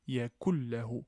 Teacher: Comme dans notre cas ici, yakullahu, yakullahu, assimilation, nun est assimilé au lem, donc il disparaît et il n'y a pas de nasalisation. Donc je passe du kef vers le lem directement, yakullahu. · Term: assimilation sans nasalisation